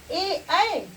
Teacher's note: ए ऐ कंठ तालव्य वर्ण है।